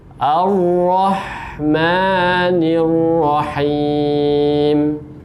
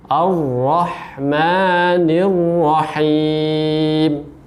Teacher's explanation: Huruf ra-nya ini ditebalkan, kemudian sifat takrir, ya. Sifat takrirnya ini juga ada pada huruf ra itu sendiri.